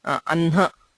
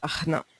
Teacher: when hakara is followed by the anunasikas like ma or na The Anunasika is pronounced first and the Hakara is heard later.